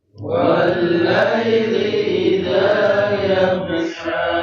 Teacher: ketika ada huruf gho itu tidak dipantulkan karena dia bukan masuk ke dalam huruf qalqalah. Ketika menemukan huruf gho itu mengalir saja, tetapi dia agak ditekan ya.